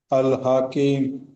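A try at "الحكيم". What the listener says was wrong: హ కు దీర్ఘం లేదు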